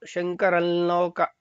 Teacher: ತುಟಿ ಸ್ಪರ್ಶ ಆಗ್ಬಾರ್ದು, ಮಕಾರ ಬರಬಾರ್ದು, ಅದು ಅನುಸ್ವಾರ ಅಷ್ಟೇ ಅಲ್ಲಿರೋದು. ಹಾಗಾಗಿ ಮಕಾರ ಕೇಳಿಸ್ದಂಗೆ ಶಂಕರಲ್ಲೋಕ ಶಂಕರಂ ಅಂತ ಲಾ ಅನ್ನೋದನ್ನ ಅಲ್ಲಿ ಅಲ್ಲಿ ಲಾಗೆ ಒಂದು ಒತ್ತಕ್ಷರ ಸೇರ್ಕೊಳ್ಳುತ್ತೆ, ಮತ್ತೆ ಅದು ಅನುನಾಸಿಕವಾಗಿ ಹೇಳ್ತೀವಿ ಲಾ ಅಂತ.